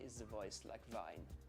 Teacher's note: the th sound has changed to a zed